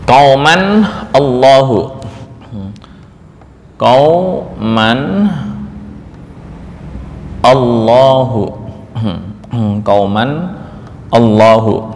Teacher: Supaya ini bisa terbaca lahu kan aneh. Akhirnya diberikan harakat penolong yaitu berupa kasrah. Maka di mushaf yang di Indonesia ini dikasih nun kecil.